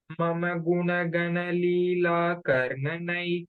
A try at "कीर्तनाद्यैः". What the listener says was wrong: Kirti no. Kirta nadhyai. Kirtanadhyaihi.